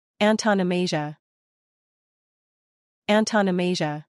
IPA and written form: ˌæn tə nəˈmeɪ ʒə (Antonomasia)